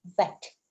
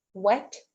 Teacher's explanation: Uh that bilabial w sound because v exists in many languages. uh you lean your teeth um towards the lip and then you say v that's okay but w doesn't involve teeth